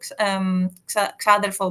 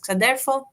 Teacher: the lowering of the stress from the antepenultimate to penultimate syllable